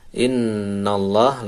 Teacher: Nallah, lafzul jalalah dibaca tebal tanpa waqaf, boleh berhenti. Innallah, lafzul jalalah tebal, nun tasydid didengungkan